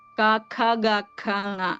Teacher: ഇത്രയും അക്ഷരങ്ങളാണ് കണ്ഡത്തിൽ നിന്ന് പുറപ്പെടുന്നത് അതായത് അത് ഉച്ചരിക്ക കണ്ഡത്തിന്റെ സഹായം ആവശ്യമാണ് അല്ലെങ്കിൽ ഏറ്റവും കൂടുതൽ ഉച്ചരിക്കാൻ എല്ലാത്തിന്റെ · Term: കണ്ഠയം